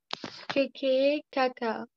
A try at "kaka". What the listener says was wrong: Ok, on l'allonge encore. Caca.